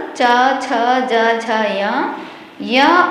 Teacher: चू से च वर्ग च छ ज झ य और श, ये तालु से बोले जाने वाले वर्ण हैं। तीसरा सूत्र है ऋटुरसाः मूर्धन्याः। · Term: तालव्याः